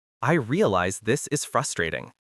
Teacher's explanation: It should be spoken with a falling gentle intonation, conveying sincere understanding.